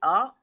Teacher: मु के खाली हिस्से से हमजा की अदायगी करी